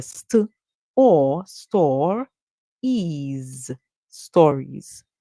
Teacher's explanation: the s that comes at the end makes a sound like Z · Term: z sound